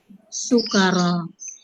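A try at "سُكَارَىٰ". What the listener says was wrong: ya, sukaro, salah. Ininya nggak pakai tasdid ya.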